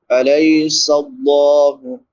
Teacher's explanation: یا ساکن ما قبل فتحہ یعنی زبر ہے، تو اس کو نرمی سے ادا کریں گے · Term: یا لین